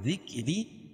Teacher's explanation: ذکری، پہلی والی را کے نیچے زیر ہے تو باریک ہوگی اور دوسری والی را پر ہوگی، کھڑی زیر قائم مقام الف مدہ کے اس کو ایک الف کے برابر کھینچ کے پڑھیں گے